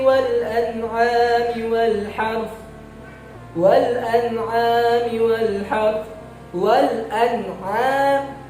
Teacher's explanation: nun mati bertemu dengan huruf ain, yang mana ain ini adalah salah satu huruf izhar, maka cara membacanya jelas, nggak boleh didengungkan atau disamar-samarkan.